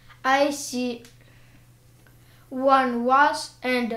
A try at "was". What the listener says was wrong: was z там в конце.